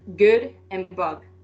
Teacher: block airflow with the back of the tongue against the soft palate